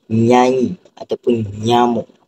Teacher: tengah lidah tu akan menyentuh langit keras · Tengah lidah tu akan menyentuh lelangit keras, jadi akan bunyi nyanyi ataupun nyamuk. Dia akan kedengaran sengau.